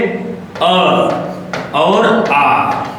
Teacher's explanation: इन दोनों का उच्चारण जो मुख के कंठ हिस्से से होता है।